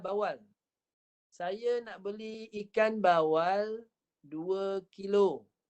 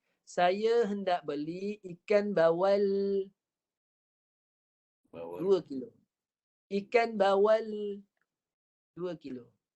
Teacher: Lidah kalau lurus tak dilencongkan, sebab lam ni dia melencong, dia guna hujung tepi lidah. Itu sebab bunyi dia akan menghasilkan bunyi melencong.